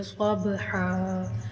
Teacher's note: ضاد پر حروف ہے، اس کو موٹا پڑھیں گے اور با کے اوپر کلکلا یعنی ہلا کر پڑھیں گے۔ ہا کو ایک الف کے برابر کھینچ کر پڑھیں گے